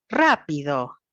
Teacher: Acá lo que vemos es que la terapeuta le dice rápido, es decir, el círculo grande es la sílaba ra, y tiene esta colita porque lo que estoy tratando de mostrar es que la altura tonal, el tono de la voz, empieza más alto y termina más bajo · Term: acento tonal